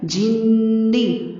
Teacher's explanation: نون پر غنہ ہوگا لیکن نون کو لمبا نہیں کیجیے گا